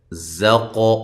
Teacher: قاف کو موٹا بھی کریں، قلقلہ بھی کریں